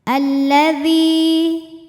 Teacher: alif lam tidak dibaca · Sebab ada ya sukun sebelumnya berharokat kasroh. Cara bacanya dzal dipanjangkan 2 harokat. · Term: alif lam syamsiah, mad tabi'i dhahiri